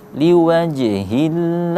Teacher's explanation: terdapat lagi qalqalah sughra juga, huruf jim. Nah ya, jadi kita bacanya liwaj, pantulan kecil.